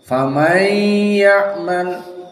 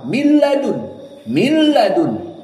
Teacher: Maka ini dua harokat dan makhrajnya jadi pindah ke khayshum, ke hidung. Sehingga jika kita tutup hidung kita, this operational for idgham bi gunnah is cancelled or failed.